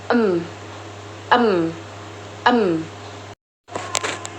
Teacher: Yang ke-10 ada huruf M. Huruf M dibentuk dengan menggunakan bibir atas dan bibir bawah, serta menghasilkan suara yang bersuara melalui rongga hidung atau disebut nasal bilabial.